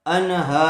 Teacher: نون ساکن کے بعد حروف حلقی میں سے ہا آیا ہوا ہے اس لیے بغیر غننے کے جلد اظہار کر کے پڑھیں گے